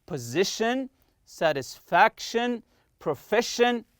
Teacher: Also we took the uh uh pronunciation to stress the next to last syllable when the word is ending with t io n c i a n or s i o n all of them are pronounced shin